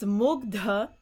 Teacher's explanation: this ha is going to lose its aspiration from the gutturals, and then it's going to turn into that ga. It's going to soften into that ga.